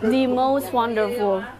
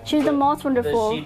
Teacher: The itu dibacanya di. Tapi kalau misalkan pengucapannya cepat, ketika ngobrol tereh, biasanya di jadi the.